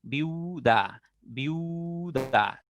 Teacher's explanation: Viuda tiene dos vocales cerradas. La I y la U son cerradas. Fíjense por qué son cerradas. Cuando ustedes pronuncian, tus labios se cierran.